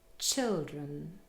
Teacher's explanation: The last syllable, drun, is not stressed and contains a schwa.